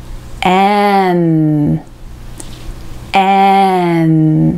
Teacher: 顎をしっかり下げて、戻った時に唇が合わさって、息が鼻腔から出る感じです。